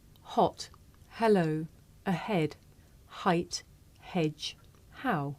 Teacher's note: a voiceless consonant it makes very little sound because it's really just your breath